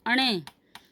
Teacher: इसका उच्चारण स्थान है मूर्धा और नासिका